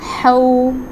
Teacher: ہا، واو زبر ہو، ہا حروف حلقی میں سے ہے، اس کو حلق کے وسطی حصے سے ادا کریں گے